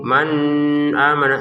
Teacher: nun sukun bertemu hamzah kita baca dengan jelas ya. Jangan dengung.